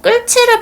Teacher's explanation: 이 히읗이 지읒을 만나서 치가 된 거예요. 그러면 니은과 디귿이 일어난다 라고 하는데 여기서 끌치에서는요 히읗과 지읒이 축약됐습니다. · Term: 거센 소리